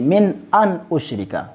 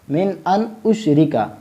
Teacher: جب نون ساکن ہو اور اس کے بعد حروف حلقی میں سے کوئی حرف آ جائے تو وہاں ہم اظہار کریں گے، یعنی اخفا نہیں کریں گے، ناک میں آواز نہیں لے جائیں گے۔ تو اس کو ہم اس طرح پڑھیں گے من ان اشرک، یعنی اس کو ظاہر کریں گے، اظہار کریں گے، من ان اشرک۔